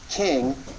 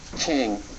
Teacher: a little more back in the throat you can think of there's King where the pronunciation is more forward in your mouth but then you can try to pronounce King slightly further in the back beginning deeper in your throat